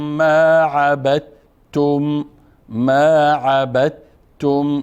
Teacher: اینجا مدغم میکنیم به ت، گویایی که تنها ت داره نطق میشه